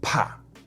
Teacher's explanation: afraid in Chinese is PA with a fourth tone